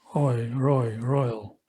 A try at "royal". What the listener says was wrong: Better.